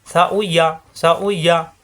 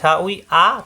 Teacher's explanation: সা নরম করে, উই দুই ঠোঁট থেকে, ইয়া জিহ্বার মাঝখানে উপরে তালুতে, সা উই ইয়া, সা উই ইয়া।